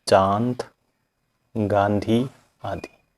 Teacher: सिर्फ नाक से ही आती है अनुनासिक को मुख और नासिका दोनों से बोला जाता है